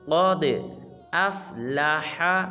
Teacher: قاف کو پر ادا کریں گے اور دال کو قلقلہ